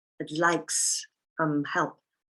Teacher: I have taken I'd like and I have linked it to the s of some